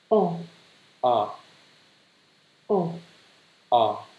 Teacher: Hơi giống chữ O trong tiếng Việt nhưng mà mình hơi há miệng một chút. O, đọc ngắn và dứt khoát. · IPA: /ɒ/